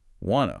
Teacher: The final T sound in want is often completely dropped, especially before another consonant sound like the T in to, and the word to itself usually reduces in unstressed positions.